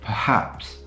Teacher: it's the second syllable that bears the stress and not the first syllable